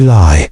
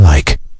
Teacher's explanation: You'll notice that the ending sounds are completely different. One vibrates and one releases air.